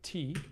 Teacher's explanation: in an English speaker's mental representation of the word T, we have a voiceless alveolar stop, or coronal.